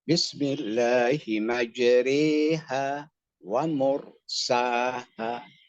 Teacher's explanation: Vokal E tebal. Sebab nanti kiroat lain itu vokal E-nya tipis. Yang disebut taklil. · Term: imalah kubro